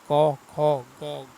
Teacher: इनका उच्चारण कंठ और जीहवा के निचली भाग के स्पर्श से होता है।